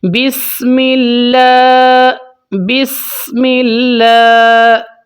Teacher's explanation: تو لام کے اوپر کھڑی زبر ہے تو لمبا کر کے پڑھیں گے ایک الف تک، مطلب 2 سیکنڈ تک